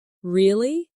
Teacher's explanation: when they are surprised, their voice goes up